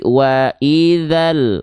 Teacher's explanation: Wa idzal, nggak, tapi wa idzal, nggak perlu dipanjang-panjangkan karena mad tabi'inya gagal aktif karena berjumpa dengan idhar qamari atau alif lam